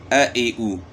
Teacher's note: حمزے کی حرکات کی آواز جو ہے نا گلے کے آخر سے نکالنی ہے. یعنی حمزہ کی جو آواز ہے، اس کے اوپر زبر ہوگی تو آواز ہوگی آ، زیر ہوگی تو ای، پیش ہوگی تو او، اے ای او.